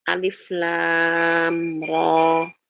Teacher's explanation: lamnya kita enggak idghamkan ke ro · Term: lazim harfi mukhaffaf